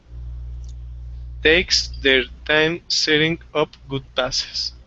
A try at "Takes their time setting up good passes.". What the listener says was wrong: Okay, much better. That was good. That was really good.